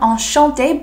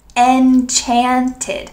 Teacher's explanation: In French, this word is often used when you meet someone, enchanté, with a sh sound, enchanté, but in English, we need to use the ch sound, enchanted.